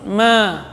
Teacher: Ma panjang 2 harakat karena ada alif mad tabi'i.